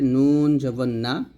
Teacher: নুন জিহ্বার আগা তার বরাবর উপরের তালু সঙ্গে লাগাতে হবে